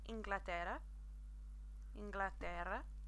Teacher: remember to double R, that trill sound that you want to use there